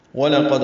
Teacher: وَلَقَدْ واو لام جلدی ادا کریں گے، واو کو ہونٹوں کی نا تمام گلائی سے ادا کریں گے، لام باریک، قاف پر دال ساکن پہ قلقلہ۔